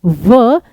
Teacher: व नीचे का होठ ऊपर के दांत। तो दंतोष्ठ।